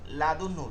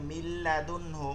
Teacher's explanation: বা তানবিনের বামে ইদমে বেলাগুনার কোন হরফ আসলে ওই হরফকে মানে রলাম কে গুন্না ছাড়া তাসদি মিলে পড়তে হয়